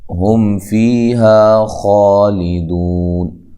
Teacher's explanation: ہم فیہا خالدون، ہم میم ساکن کا اظہار ہے، فی یا مدہ ہے، ہا الف مدہ ہے، خا مد اصلی ہے، دو واو مدہ ہے، وقف کی صورت میں مد کر سکتے ہیں، اور یہاں خا کو خوب موٹا کر کے پڑھنا ہے